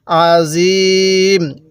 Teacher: মিমের উপর সাকিন দিয়ে দিলে এভাবে পড়তে হবে আজিম এবং তিন আলিফ টান দিব